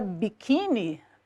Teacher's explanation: perceber que biquíni, a sílaba tônica é o qui